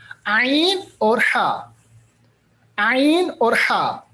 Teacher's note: عین اور ہا ہمارے پاس ایسے حروف ہے جن کو ہمیں ادا کرنا ہے اس طریقے سے کہ یہ گلے کے بیچ میں ادا ہو